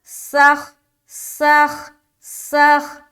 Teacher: سین کو سیٹی کی طرح اور خا میں ملا دیں گے